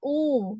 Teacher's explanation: Lalu domah sempurna u ya u bibirnya dimonyongkan tapi lubang bibirnya itu dibuatnya tidak terlalu lebar. Jadi dia ee foname-nya itu bunyinya itu U sempurna ya, U gitu ya.